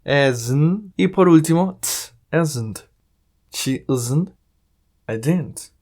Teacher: Lo diremos de la siguiente manera. Una E muy suave. Agregamos un poco de Z. Es. Un poco de N.